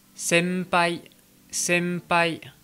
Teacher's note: vient avant et un peu nazaliser contrairement à la prononciation française quand le son on en japonais est suivi d'une consonne comme le P ou le B et bien la prononciation va être un petit peu altérée ça va un peu plus ressembler à un M français